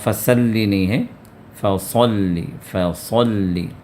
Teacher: اب یہاں پر فا کے بعد صاد ہے، صاد کو پر کر کے ادا کرنا ہے، سین کو باریک، صاد کو موٹا